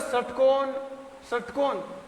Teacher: स और जब बोलेंगे षटकोण षटकोण, तो जो जीभ का जो मूर्धा वाला हिस्सा है वो हमें स्पर्श होना चाहिए ऊपरी हिस्से को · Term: मूर्धन्य